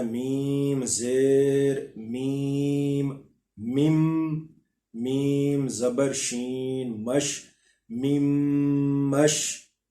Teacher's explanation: ہم نے سیدھا میم کو میم کے ساتھ ضم کر دینا ہے، ان دونوں کو آپس میں ملا دینا ہے، میم کو میم کے ساتھ مدغم کر کے پڑھ دینا ہے.